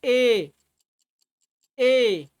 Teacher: ए जो है उसका उच्चारण जो है कंठ और तालु दोनों से होता है।